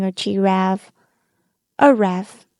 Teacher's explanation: One error or mistake infants make is calling a giraffe a raff, because they cut off the first syllable chi, since it's not stressed